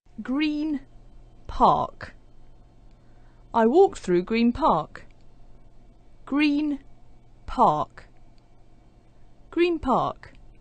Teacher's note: Well, what's happening when we say Green Park is we have a n sound at the end of green, followed by a p sound at the beginning of park. So the n sound at the end of green starts to sound like a m